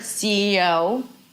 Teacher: in the word CEO, the stress falls on the last letter